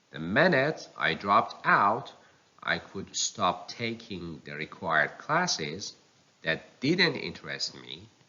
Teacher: the negative words take the primary stress